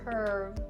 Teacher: when you're doing the V sound, you should feel the vibrations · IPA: /kɜːrv/